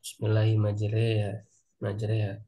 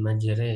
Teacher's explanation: imalah itu ee Fatah condong ke kasrh jadi e gitu kan Kalau Alif condong ke iya